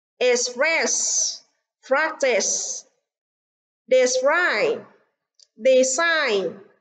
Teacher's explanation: practice trọng âm rơi vào âm tiết đầu tiên, còn ba từ còn lại trọng âm rơi vào âm tiết thứ hai.